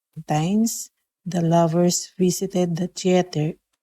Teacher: I kind of hear like it's just a T sound instead of a voiceless TH.